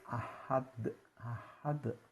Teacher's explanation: Ini hamzah makhrajnya di pangkal tenggorokan, sifat syiddah jahar. Jadi A ini di pangkal tenggorokan paling jauh.